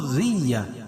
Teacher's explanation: ذال کو باریک پڑھیں گے اور رائے مشددہ کے نیچے زیر ہو تو را باریک پڑھی جاتی ہے